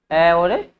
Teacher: अ और आ का उच्चारण कहां से होता है? कंठों से होता है।